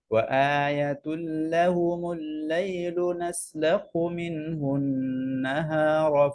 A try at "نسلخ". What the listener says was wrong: এই যে খয়ের যে আওয়াজটা না, রখাওয়া, এই খয়ের আওয়াজটা আসতেছে না, যেমন নাসলাখু, হু এরকম হায়ের মতো চলে আসে, লেটার চেঞ্জ হয়ে যাচ্ছে।